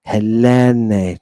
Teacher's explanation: Notice that I'm putting the extra emphasis on the accented epsilon. That just means I'm drawing it out.